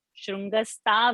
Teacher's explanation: The ta should not be there. Tha Mahaprana has to be said correctly.